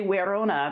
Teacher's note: V's are pronounced like W in Latin